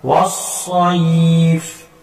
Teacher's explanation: سین باریک اور صاد موٹا ہوتا ہے